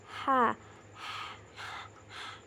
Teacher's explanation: Lalu bunyi huruf H ini juga sama di tengah tenggorokan. Suaranya mirip seperti orang yang sedang menghisap permen min atau permen hangat.